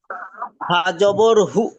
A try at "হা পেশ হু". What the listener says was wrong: হা হা জবর হু নয়, হা পেশ হু।